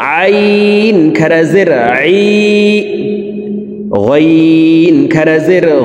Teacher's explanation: আইন হরফ হলকের মধ্যখান থেকে উচ্চারণ করবো